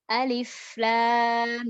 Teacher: Jadi suaranya jangan putus. Alif lam. Jadi udara terus langsung ke lam.